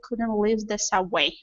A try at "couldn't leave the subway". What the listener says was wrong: let's get a little bit deeper e sound here